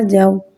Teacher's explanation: واو ساکن ہے، واو ساکن سے پہلے زبر آ رہا ہے، واولین ہو رہا ہے، یعنی واولین کو بغیر کھینچے بغیر جھٹکا دیے نرمی سے معروف پڑھیں گے اور زبر کو منہ کھول کے ادا کریں گے